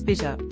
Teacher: some speakers flap T between vowels in words such as bitter or in phrases such as get out. in a similar way to US speakers.